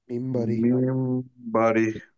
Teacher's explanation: নুনের পরে বা থাকলে মিম দিয়ে রিপ্লেস হয়ে যায় উইথ গুন্না, সো আমরা পড়ছি মিন বাড়ি।